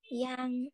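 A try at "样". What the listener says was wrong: Không phải là Giang nhá. Không, không, đừng đọc là Giang nhá. Yang. Yang.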